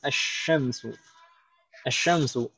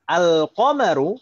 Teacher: Di sini asyamsu, lamnya langsung idgham ke huruf syin.